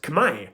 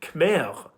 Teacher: you know that R isn't pronounced at the end of the word, so no need to respell it.